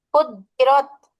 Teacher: এটা দুইবার উচ্চারণ করতে হবে জিমের উপরে তাসদিদ আছে